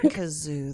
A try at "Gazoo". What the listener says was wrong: Gazoo. Or it's not Kazoo. Because Kazoo is like the. It's not that. I think it's with a G.